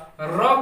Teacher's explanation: र को ही प्रकंपित या लुंठित व्यंजन कहते हैं